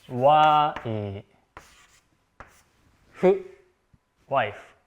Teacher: this F actually becomes H sound, even though in Japanese we use the letter F.